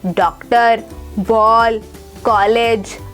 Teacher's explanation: ओ की ध्वनि आ और ओ के मध्य की है। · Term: आगत ध्वनि